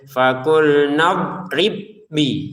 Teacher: ada ba sukun bertemu dengan ba, maka ba pertama masukin ba ke yang kedua sehingga pantulannya hilang.